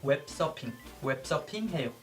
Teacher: since we don't have the F sound in our language, we replace it with P, so it becomes 웹서핑.